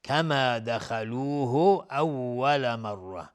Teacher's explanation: خا از حروف استعلاس غلیظ تلفظ میشه